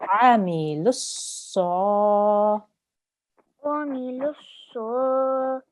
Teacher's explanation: Ain, so it comes from your throat.